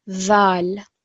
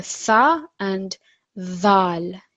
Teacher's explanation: the tip of the tongue slightly comes out of the mouth like tha, but there is more vibration